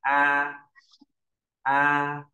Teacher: trung bình bốn là cao vừa 5 là cao nhất thì thanh một sẽ độ cao là 55 mình sẽ đọc từ cao nhất sang cao nhất